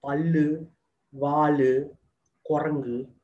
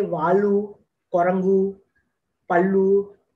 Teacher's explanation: the Dravidian languages have a close central vowel, which is U. · When North Indians are learning Tamil, they don't have the closed central vowel. So they turn it into the closed back vowel.